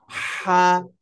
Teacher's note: শব্দের মাঝে শব্দের শেষের অবস্থা হলো এটা তারপরে কণ্ঠনালীর কোথা থেকে মধ্যখান থেকে হালকা গলা চেপে উচ্চারণ করতে হবে